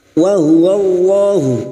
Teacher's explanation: lam jalalah yang didahului fathah kita baca tafkim